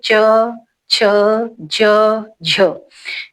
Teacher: तालु क्या है, देखिए च, जहां से आप च बोल रहे हैं, गले से थोड़ा सा आगे वाला मुंह का भाग है जो उसे बोलते हैं तालु। च छ, जब च बोलते हुए, छ बोलते हुए जहां तुम्हारी जीभ टच कर रही है, स्पर्श कर रही है, वो होगा आपका तालु।